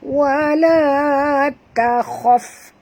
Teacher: Ta tak tebal, kha saja tebal.